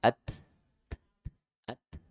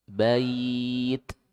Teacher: Jadi ta itu punya sifat hamas dan syiddah. Ya, jadi suaranya tertahan tapi napasnya mengalir.